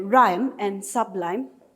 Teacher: the stress is on the final syllable of the word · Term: masculine